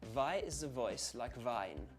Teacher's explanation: Notice also that on the word the in the voice, the TH sound has changed to a Z.